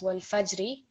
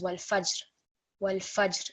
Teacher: So you can slightly hear the ra come through, but again it's a muted letter because it will also take sukoon on pausing. So wal fajri becomes wal fajr. · ordinarily we would read it as wal fajri, but when we pause we read it as wal fajr. Wal fajr. So you can slightly hear the ra come through, but again it's a muted letter because it will also take sukoon on pausing.